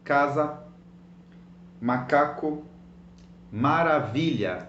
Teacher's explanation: It's a long word, maravilha, but you will stress the second last syllable.